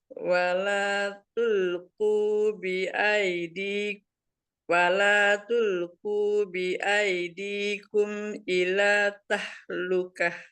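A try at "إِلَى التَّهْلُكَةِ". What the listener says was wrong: Tanya kan ada tasjidnya. Jadi ilat ya, langsung ilat tahlukah. Nah, ini baru H nih. Lanjutnya yang H ini H kecil.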